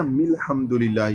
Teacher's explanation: शुरू में अलिफ उन्होंने नहीं पढ़ा, तो ये जो नहीं अलिफ पढ़ा ना ये अलिफ वसली था जो नहीं पढ़ा गया।